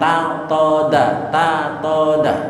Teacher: Makhrajnya sama, to dengan ta, makhrajnya di ujung lidah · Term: mutajanisen